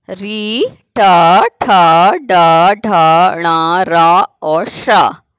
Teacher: इनका उच्चारण स्थान है मूर्धा।